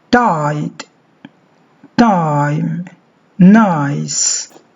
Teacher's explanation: this diphthong begins with an open vowel which is between front and park it is quite similar to